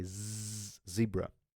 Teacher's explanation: when you say Z zebra you can touch your vocal cords and you will see there is a definite vibration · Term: voice consonants